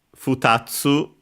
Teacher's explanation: Futatsu should be accented on the tsu.